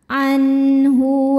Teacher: Berikutnya ada hukum izhar halqi. Sebab ada nun sukun yang menghadapi huruf halqi atau huruf tenggorokan yaitu huruf H. Maka cara bacanya nun sukun dibaca jelas.